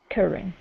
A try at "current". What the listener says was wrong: Give me that T at the end. Current.